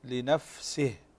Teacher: فالهمس يكون أظهر في الفاء من السين، نقول لنفسه، فلأن الفاء هنا ساكنة، لأن الفاء هنا ساكنة، ولو السين هي التي ساكنة فيكون الهمس فيها أظهر.